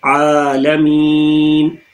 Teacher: عین پھر ہمارے مڈل تھروٹ سے